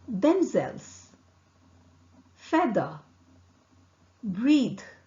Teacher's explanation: the air escapes between the upper front teeth and tip of the tongue here the vocal cord vibrates